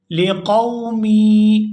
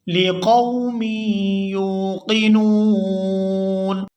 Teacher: یہاں میم کو یا مشدد کے ساتھ ملائیں گے تو غنہ کریں گے